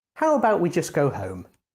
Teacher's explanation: to make a suggestion use a falling tone